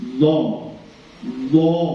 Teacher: Jadi lidahnya yang belakang dinaikkan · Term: tebal